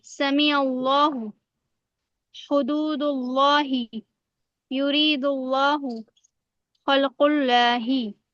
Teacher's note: लफ्ज अल्लाह की लाम को जब हम पुर पढ़ते हैं तो हमारी जबान जो है वो बुलंद हो जाती है